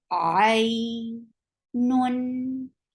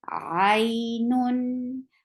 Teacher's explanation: Give the wasut when you are pronouncing tanween, because the second dhamma is actually noon sakin.